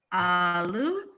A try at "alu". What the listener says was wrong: Yeah, see, both of you guys kind of on the second one still have that long A, it sounds like. Because there's alu and then alu. Alu. Alu. So basically just hold that L just a little bit longer on the second one. Alu. Yeah, it's just like l. L.